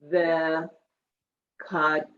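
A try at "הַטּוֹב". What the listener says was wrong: No, it's a chaf. Tuv.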